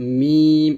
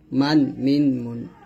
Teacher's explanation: মিম দুই ঠুটের শুকন জায়গা হতে আমরা উচ্চারণ করব